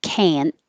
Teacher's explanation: you won't hear the T, so it will sound like can.